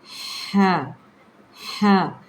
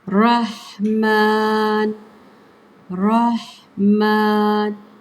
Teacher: یہ حلقے وسط یعنی کہ آپ کے حلق، آپ کی گردن، حلق گردن کو کہتے ہیں نا، اس کے درمیان والے حصے سے ادا کیا جاتا ہے۔ اس کو بھی الف مدہ کے ساتھ کھینچ کے پڑھیں گے تو آپ کو اس کا مخرج کلیئر سمجھ آئے گا۔